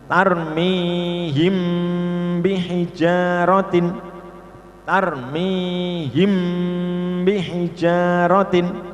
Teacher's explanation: Mim sukun bertemu ba, ini dibaca dengung ya. Tarmihim bihijaratin, tarmihim bihijaratin, namanya ikhfa syafawi.